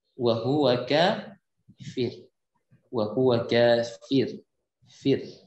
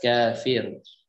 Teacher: Kafir, wakafnya, maka pembacaan fir dibaca dengan tarqiq, yaitu tipis ya, tidak boleh dibaca dengan kafir, tapi wa huwa kafir, wa huwa kafir, fir.